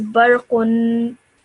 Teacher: So when you produce this sound, when you have this tanween, you should produce a stretched nasal sound. So you just say as barqun. · just produce that extended kind of nasal sound at the end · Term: dhamma then